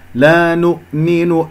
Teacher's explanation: الهمزة بقفل الأوتار الصوتية ساكنة قبلها مضموم